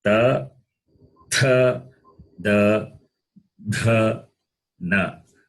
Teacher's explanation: tongue touches the base of the upper teeth. So Dantyaha, the sound produced is called dental, and in Saṃskṛtam it is called Dantyaha.